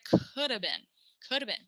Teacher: We take this have and we make it uh.